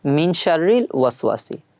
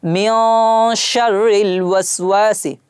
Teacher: হালকা একটু নাকের ভিতর নিয়েছি। এটা হলো গুনা করে পড়া।